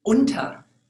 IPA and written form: ˈʊntɐ (unter)